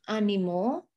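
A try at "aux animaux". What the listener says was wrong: Oh, habis X ada A tuh. Jadi Z nyambung. Ozanimo.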